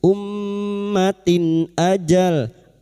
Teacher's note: Ummatin, ta marbutah bersama kasrah tanwin bertemu hamzah, izhar halqi. Kasra tanwin dibaca dengan jelas tanpa bersenandung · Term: idhar halqi